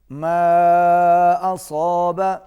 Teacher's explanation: ما کے اوپر مد منفصل ہے، چھوٹی مد ہے، اس کو کھینچ کے پڑھیں گے۔